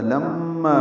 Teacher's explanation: لما بھی مشدد پہ غنہ ہے ، لام باریک ہے، ما الف مدہ ہے، یقض قاف ساکن